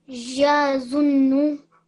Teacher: you need to keep a 2 second on the zun because it's a noon mushaddad, which means it's a noon gunna